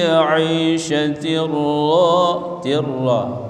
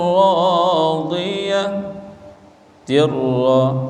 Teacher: Fahuwa fi 'aishatir ra, pada tanwin jumpa dengan ra, idgham bila gunnah, idgham bila gunnah, hurufnya dua, lam ra. Apabila nun mati atau tanwin jumpa dengan lam, jumpa dengan ra, ini dibaca tidak dengung, idgham bila gunnah. Fi 'aishatir radiyah, tirra, ra mad asli.